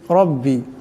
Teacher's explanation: রার উপর জবর আছে, রার আওয়াজটাকে মোটা করিয়া পড়তে হবে